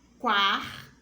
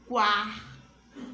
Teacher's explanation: A é pronunciado com mais intensidade que o U, ó. O A, ele é mais aberto e o U fica pequenininho. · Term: semivogal